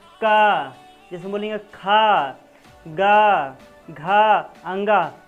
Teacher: तो यही कंठ से ये आवाज़ निकल रहा है, देखिए सीधा नहीं कर रहा है, कहाँ से निकल रहा है, सीधा ये आवाज़ निकल रहा है, ये सीधा आवाज़ निकलता है कंठ से।